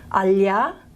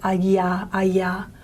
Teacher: the difference between a palatal lateral alya and a plain palatal ya